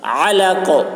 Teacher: عین کو حلق سے, قاف میں قلقلہ. علق.